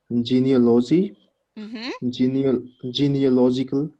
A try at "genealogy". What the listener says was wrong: so we don't really pronounce overly the a in genealogy